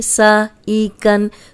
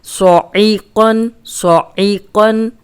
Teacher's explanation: یہ صاد موٹا ہے، عین حلق سے نکالنا ہے اور قوف موٹا ہے